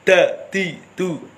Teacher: ujung-ujung ke depan atas lidah ditekan di belakang gigi seri atas mengenai gusi